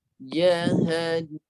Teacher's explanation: Tekannya di rongga hidung. Dengung dia 2 harakat.